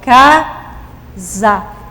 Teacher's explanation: quando eu pronuncio a palavra o s entre duas vogais ele tem o som de z